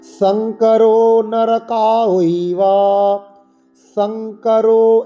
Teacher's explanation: শঙ্করো নরকায়ৈবা, শঙ্করো, এই যে সং দন্তস দাঁতে লাগিয়ে উচ্চারণ করতে হবে